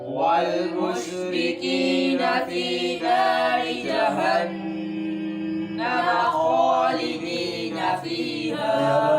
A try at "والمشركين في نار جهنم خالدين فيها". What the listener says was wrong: المش शीन पे कलकला नहीं करना والمشركين في نار جهنم خالدين فيها